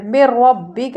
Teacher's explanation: را کو پر کریں گے کیونکہ را کے اوپر زبر آ گیا، اور کاف کے اوپر زبر ہے، زبر کو جلدی پڑھیں من ربک۔